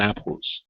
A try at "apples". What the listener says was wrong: Instead of apples, give me an L. Apple. Apples. Use your tongue at the top of the mouth. Apple. Apples.